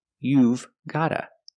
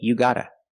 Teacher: in America, we make this mistake and we don't pronounce the v sound, so we just say you gotta.